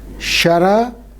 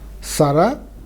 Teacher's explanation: Shara means arrow in Sanskrit becomes Sara. The palatal changes to alveolar.